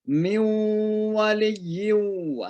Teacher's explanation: Kemudian ada mim nun ketemu dengan waw, miu, ya, jadi suara nun masuk ke waw, namanya idgham